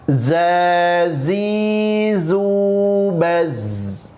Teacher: Ngalir, ada sifat rokhawah, kemudian ada juga pada sifat sofir pada huruf zai itu.